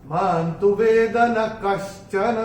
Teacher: चौथे चरण में मां के ऊपर जो अनुस्वार है उसके बाद का अक्षर है त, और अनुस्वार के बाद जब त आएगा तो अनुस्वार का उच्चारण होगा न।